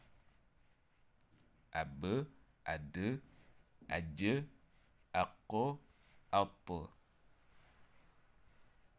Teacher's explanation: Mais exceptionnellement, pour ces 5 lettres, on rebondit sur la consonne en ajoutant un E à la fin de la prononciation